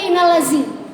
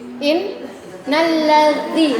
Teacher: Dza itu ujung lidah keluar. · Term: huruf dza